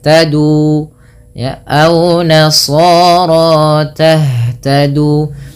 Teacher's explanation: Ha itu merupakan salah satu sifatnya adalah hamas. Hamas artinya mengalirnya nafas. Yang kedua, ha juga termasuk namanya sifat rokhawah, mengalirnya suara.